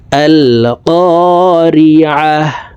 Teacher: গোলতা ওয়াকফের ক্ষেত্রে হার উচ্চারণ করব এবং হাকে সাকিন করে ফেলবো, অর্থাৎ আয়াতের শেষে যদি গোলতা থাকে তাহলে এই গোলতা আর পড়া যাবে না, তাকে হা বানাইতে হবে এবং হাকে সাকিন করে ফেলবো।